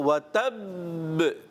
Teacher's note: تھوڑا ٹھہریں اس کو, وَتَب پھر چھوڑیں با کو. اگر آپ نے فوراً چھوڑ دیا تو یہ ساکن کلکلا ہوگا, اور ہم نے یہاں مشدد کلکلا کرنا ہے